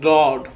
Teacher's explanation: The side of the base of the tongue touches the upper molar tooth when this letter is pronounced.